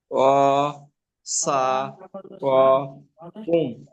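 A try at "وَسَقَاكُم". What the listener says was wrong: হ্যাঁ, ও সা ক কুম,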